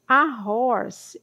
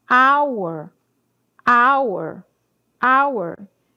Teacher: Horse tem som de R, mas hour já tem o som de a aberto, né? Então você fala anour, 1 hora.